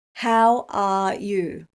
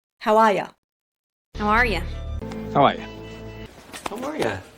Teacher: the native speaker rule for this is that we change you to Y in casual speech